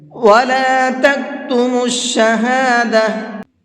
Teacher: اس کو شہادہ ہا کے ساتھ میں پڑھا ہے، تا کے ساتھ نہیں پڑھا ہے، حالانکہ یہاں پر تا ہے۔